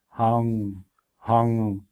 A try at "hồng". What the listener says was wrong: The tone is right, but you gotta close your lips every time you see ONG.